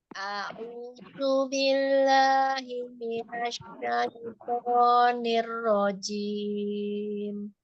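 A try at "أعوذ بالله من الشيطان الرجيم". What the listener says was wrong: Nam jangan mati hidung. Kemudian jim, kuatkan lagi dengan jim, ya, buat jim. Mundur dikit. Mundur dikit, jangan ketekan.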